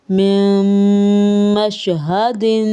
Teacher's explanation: تھوڑا سا نون کی آواز کو اندر ایڈ کرنا، اس حرف کو بالکل ختم نہ کرنا، مدغم کرنا دونوں کی آواز کو۔ میم شین زبر مش، میم مش، ہا زبر ہا، میم مش ہا، دال دو زیر دن، میم مشہدن۔ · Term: ادغام